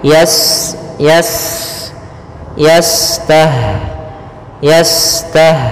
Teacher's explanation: ada sifat namanya sifat saofir Ya berdesis seperti burung